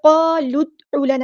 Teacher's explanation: دال ساکن ہے یہاں پر تو یہاں پہ قلقلہ ہوگا